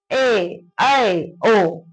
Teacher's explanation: अर्ध विवृत जिसमें मुंह थोड़ा कम खुले